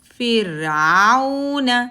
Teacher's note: رو ساکن ہے تو پہلے والے لیٹر کی حرکت دیکھیں گے، زیر ہے تو زیر کے ساتھ رو ہمیشہ پتلی پڑھی جاتی ہے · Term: رو پتلی